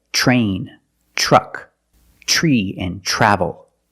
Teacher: When you have TR together in any situation, you can pronounce it ter, but usually we don't. We pronounce it ch plus the R sound, chur. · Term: ch sound